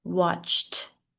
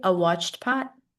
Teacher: Notice the ed sound is a T with watched